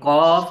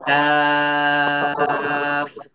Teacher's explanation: এই কফ এটা মোটা ভাবে হচ্ছিল উচ্চারণ আর কাফ এটা পাতলা ভাবে হবে